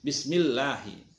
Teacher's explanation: Tapi kalau sebelumnya lafaz Allah itu berbaris kasroh seperti billahi, bismillahi, itu maka itu bismillahi, di lafaz Allahnya dibaca tipis ya.